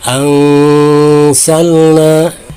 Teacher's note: ini hukumnya adalah ihfa ausat ya, dibacanya samar dan didengungkan. Jadi antara samar dan dengung ini seimbang ya, pertengahan.